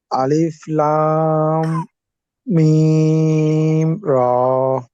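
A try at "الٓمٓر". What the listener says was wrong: আলিফটা আপনার একটু লম্বা লম্বা শোনা যায়, আলিফটা তাড়াতাড়ি পড়তে হবে, আলিফ লাম।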